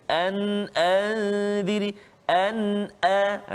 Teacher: Yang pertama, nun mati bertemu dengan alif ataupun nun mati bertemu dengan hamzah pada kalimah an, a. Nun mati bertemu dengan hamzah an, a tu. Jadi kita tak boleh baca dengung. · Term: izhar halqi